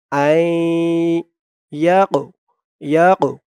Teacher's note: এই কফটা হচ্ছে কলকলার হরফ ধাক্কা দিয়ে পড়তে হবে আই ইয়াকু ইয়াকু এরকম ধাক্কা হবে আই ইয়াকু তু লা আই